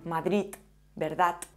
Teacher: La D final puede pronunciarse sorda, como en Cataluña.